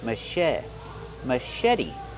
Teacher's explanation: the C8 makes a soft sh sound like Sho Mas maet put the stress on the second syllable and make the vowel e like red and bed maet machet and the t is a fast e because it's